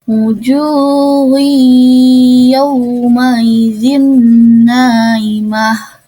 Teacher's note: domah tanwin bertemu dengan ya, yaitu dibacanya idgham bigunah, yaitu didengungkan. Kemudian yaw ada kasroh, ada fathah bertemu dengan waw sukun, yaitu dibacanya haflin atau dilembutkan.